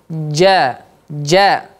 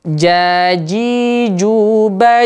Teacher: bukan dari ujung Rip dari tengah jadi jadi ya apa namanya bagian tengah lidah ini terangkat ke langit-langit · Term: huruf Jim